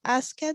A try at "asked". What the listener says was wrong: remember here asked. You don't say ask it. Ask.